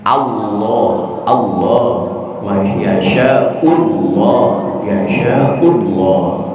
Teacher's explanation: Sebagaimana lam jalalah, ingat baik-baik, kalau lam jalalah itu didahului oleh harakat fathah atau dhamma, jabar atau ps, maka lam jalalah bunyinya menjadi tebal